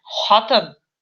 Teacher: буква Х по сравнению с русским вариантом произносится более гортанно, то есть она более такая, знаете, более грубее, что ли, произносится, более глубоко в горле, да.